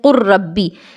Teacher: کہ قاف کے بعد ہم نے ڈائریکٹ را کو پڑھا، یعنی لام تو لکھنے میں ہی بس آیا ہے، پڑھنے میں نہیں آیا · قاف کو را سے ڈائریکٹ ملایا گیا اور اس لام کو بالکل نہیں پڑھا گیا ، بالکل لام کا پوری طرح سے ادغام ہو گیا، تو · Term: ادغام تام